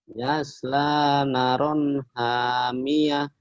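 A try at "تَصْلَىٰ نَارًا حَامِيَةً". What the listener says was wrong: Bukan yas, tapi tak. Titiknya di atas.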